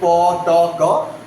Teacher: the vocal cords, they stay away from each other during articulation of sounds like po, to, ko or any nine of the voiceless sounds, okay, consonants. · So as vocal cords stay away from each other, they do not come close or touch each other, what we find, there is no vibration. Kono vibration hoy na.